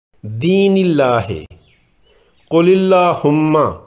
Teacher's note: اسم جلالہ سے پہلے حروف کے نیچے زیر ہے، اس لیے اسم جلالہ کا لام باریک ادا ہوگا